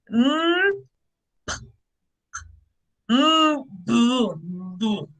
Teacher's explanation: Bilabial because we put our lips together. We press our both lips together.